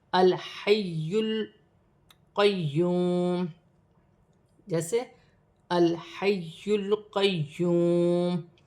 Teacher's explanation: لام ساکن ہے تو لام کو یا کے ساتھ ملا کر پڑھا جائے گا